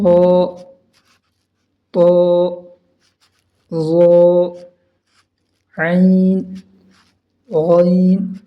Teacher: عین کو حلق میں سے نکالیں گے اور غین کو موٹی آواز سے پڑھیں گے